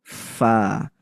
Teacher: Huruf fa berarti harus di nafasnya keluar, udaranya keluar dan pita suaranya tidak bergetar dibaca. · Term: hams